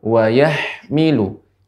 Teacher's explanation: ketika mengucapkan ha yang sukun, tidak boleh memantul